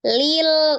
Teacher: lam Nunun atauan ktemu dengan huruf lam hukumnya adalah Idam bilaunna dilebur dengan tanpa didengungkan